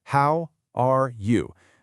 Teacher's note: The voice dips and then rises at the end. It's exactly this melody that signals to the listener that an answer is expected. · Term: rising and falling pattern